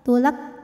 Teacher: kafnya ini secara suara sifatnya syidah jadi ada suara yang kuat